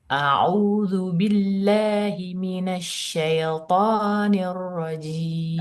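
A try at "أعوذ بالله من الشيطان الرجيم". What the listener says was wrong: Mohon maaf Ibu, ia mati tidak boleh bunyi e, harus bunyinya i. Minasyai.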